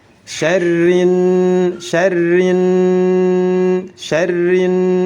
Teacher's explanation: Memasukkan huruf lam ke dalam huruf nun, huruf berikutnya. Huruf lamnya masuk dan tidak dibaca lagi, disatukan dengan huruf selanjutnya. Syarrin naffa, tidak boleh dibaca syarril naffas. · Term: idgham syamsiyah